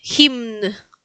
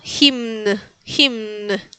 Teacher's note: los polacos pronuncian absolutamente todas las letras. Entonces, se pronuncia la m y la n.